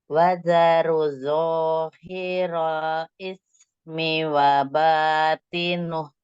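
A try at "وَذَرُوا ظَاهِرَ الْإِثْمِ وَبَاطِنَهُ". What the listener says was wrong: Ru yang di depan itu 2 harokat. Wadzaru. Ini temennya wo kan? Nah, pokoknya kurang tebel.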